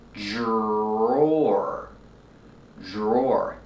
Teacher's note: the DR makes a j-j sound with a voice like juice and jump, j-j, plus the R, j-j, and the OR like floor and more.